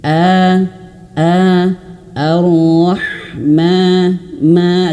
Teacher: mad thobi'i itu dua harakat dan dua harakatnya itu cuman satu ayun saja, dua ketukan saja.